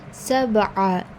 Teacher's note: So when you're reading ayn, it comes from your middle part of the throat.